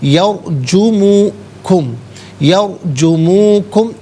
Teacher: را ساکن ما قبل یا پر زبر ہے، را ساکن کو پر کر کے پڑھیں گے